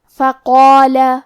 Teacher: ہمیں مد الف کو بھی بھاری آواز میں پڑھنا ہے